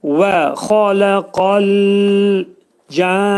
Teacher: Və burada demək dodaqlar qönçələnir, deyirik. Xa qalın, boğazın yuxarısından çıxarılır. Lə incə, qaf qalındır, istilah hərfidir.